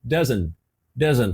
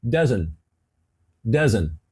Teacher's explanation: Ela não pronunciou esse T. E a pronúncia ficou doesn't.